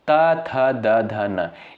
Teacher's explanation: इनका उच्चारण साथियों किससे होता है? दंत से होता है